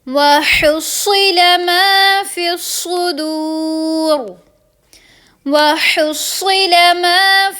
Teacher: را کو پر پڑھیں گے، صاد کو پر پڑھیں گے، قاف کو پر پڑھیں گے